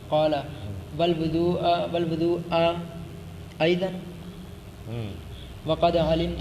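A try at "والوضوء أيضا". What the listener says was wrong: والوضو ایضا، وضو نہیں پڑھنا، والوضو ایضا کیا معنی کریں گے اس کا؟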